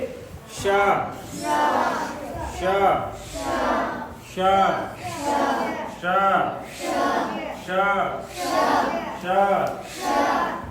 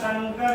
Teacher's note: जब अपनी जीभ को यहाँ तालु के पास ले जाके बोलते हैं, उच्चारण करते हैं स का, तो जिस तरह की ध्वनि निकलती है उसको बोलते हैं तालवी श